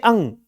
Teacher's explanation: नासिका भी का मतलब क्या हो गया कि जैसे अंग, ये जो है ये क वर्ग का आखिरी अक्षर है, और क वर्ग का उच्चारण क्या होता है, कंठ। अर्थात इसके उच्चारण स्थान होगा कंठ प्लस नासिका